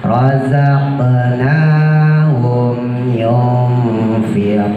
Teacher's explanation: mim mati ketemu ya, jangan lama-lama, setelah sempurna mimnya masukin ke ya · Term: izhar syafawi